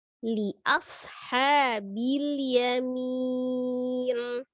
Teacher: Huruf shad itu ada suara desis seperti huruf sin, tetapi dia huruf tebal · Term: sifat as-shafir